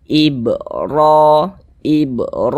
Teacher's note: memiliki harakat fathah atau tanda baca fathah maka huruf RO di dibaca tebal sehingga pangkal lisan kita naik terangkat ke atas ketika Kita mengucapkannya